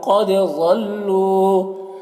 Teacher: قد میں قاف حروف مستعلیہ میں سے ہے، دال میں قلقلہ ہوگا